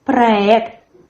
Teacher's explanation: In the word проект, the stress as well falls on the last syllable. There's a firm R, проект.